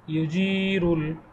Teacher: জের পরে জজম আলাইয়া, এই জন্য এক আলিফ পরিমাণে দীর্ঘ করে পড়িতে হবে